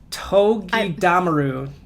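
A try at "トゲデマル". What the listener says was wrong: I think you're putting the stress on the wrong syllable. I think it's Togedamaru.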